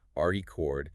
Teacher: If I stress the first syllable re cord, it's a noun.